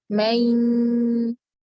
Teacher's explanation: Harusnya kita gunnahkan mayyamal, jadi gunnah ada, makhrajnya ya juga ada.